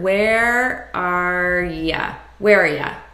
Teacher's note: I'm taking just the R sound and I'm reducing this to ya, which is a very common reduction. And I'm just combining these as one word.